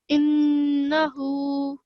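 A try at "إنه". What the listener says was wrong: Good. Okay, that was very well read. Well done for applying those changes.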